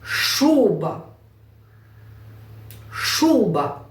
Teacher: наголос на перший голосний у